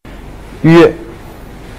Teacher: ▁这也是不对的哦。▁v▁w▁a▁vo▁vo▁voyage。▁这个时候呢是非常考验我们嘴巴的灵活度了，要每一个音都发到位，但是呢又不能拖太长，要快速的略过。我们再来试几遍▁voyage▁voyage。▁那如果大家觉得要快速的略过呢比较的困难，那我们在开始的阶段可以慢慢的来，关键呢还是在于一点，每一个音都要到位，不要吞音哦。好啦，刚才呢我们已经学习了三个半元音当中的▁ye▁和▁wo，▁那么剩下的一个是什么呢？我们今天要学习的最后一个半元音呢是▁yue约，约，约，是不是？约， 听起来有一点像中文里约会的约呢，但是还是嘴型要小很多，发音呢也短促很多 。约，约，约，约，约。它的发音部位和开口度啊，是和音素吁基本相同的，把吁短促的发出来，基本上呢就变成了约，约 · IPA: ɥ